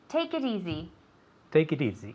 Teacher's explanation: consonant vowel consonant vowel so it sounds like one word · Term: linking